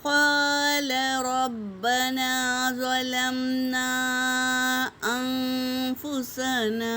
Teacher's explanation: ان سب میں الف مدہ ہے میری بہنوں، برابر برابر ادا کریں گے